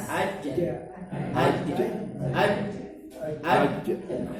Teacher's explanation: Di tengah lidah, bertemu dengan langit-langit atas. Aja. Kalau kita sebut huruf jim, pasti dia akan naik.